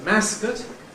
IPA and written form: ˈmæskət (mascot)